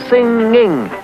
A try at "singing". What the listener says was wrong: You really ought to pay more attention to your pronunciation. Well, for one, you're always dropping your G's.